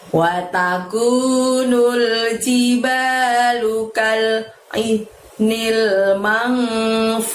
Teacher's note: Lalu lafadz ainil, dua-duanya dari tenggorokan. Mangfush, mang di situ ada nun mati bertemu fa, maka bunyi n-nya harus disamarkan dan ditahan ya teman-teman. Fu-nya panjangnya 2, lalu bertemu shin sukun karena wakof itu.